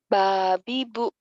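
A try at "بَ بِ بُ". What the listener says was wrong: Nggak ada yang panjang.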